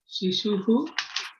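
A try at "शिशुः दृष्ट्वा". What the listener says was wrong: No, not Shishuhu Drishva. You said Shishun Drishtva. It is not Shishun. See, Guruhu, Guru, Guravaha. Gurum, Guru, Gurun. Shishun. not Shishun Drishtva. That means many children. Seeing many children, she got very happy. But then she's only seeing her child, one child. And so, Shishum Drishtva,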